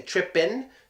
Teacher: it could have a G at the end but the way we pronounce it we say trip pin so I just took the G away